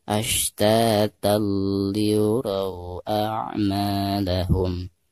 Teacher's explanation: suara tanwin yang ada di atas ta tersebut itu harus langsung diidghamkan ke huruf lam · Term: idgham bila gunah